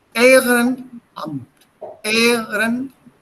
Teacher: So you give a small gap, and this gap is called in phonetics, das heißt dann Glottesschlag, a small break between the vowels. Okay, sir. Just before a vowel, there's a small break, and then the sound comes out.